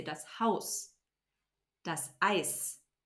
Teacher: the sound Z becomes a sharp S at the end of a syllable or a word